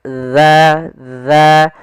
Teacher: Ujung makhrajnya agar sempurna adalah kita sesuai makhrajnya yaitu ujung lidah kita menempel dengan gigi seri atas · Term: huruf dzal, huruf zal